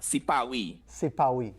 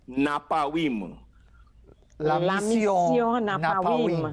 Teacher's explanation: what we would consider the R sound is replaced by the W sound